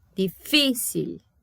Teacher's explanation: a tônica está em fi